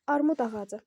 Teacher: Burda D-dan sonra bu son samitdən sonra sait gəlib deyə bu olduğu kimi qalacaq. Yəni cingiltili qalacaq. Bizdənsə kar istəyir ona görə biz ikini götürmürük.